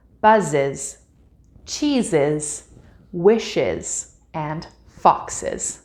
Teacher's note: sound we need to pronounce the ending S as an is this means that there is a full syllable being added on to these words